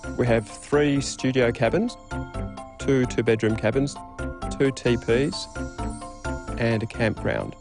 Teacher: A level tone or a low rising tone can also be used for listing.